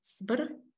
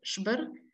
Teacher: In some varieties, though not in all, there is a shift of s to sh